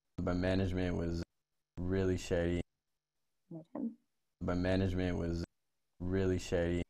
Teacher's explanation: what he does when he says the word really is a tiny little fall and then a rise